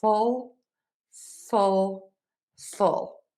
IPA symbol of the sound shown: fʊl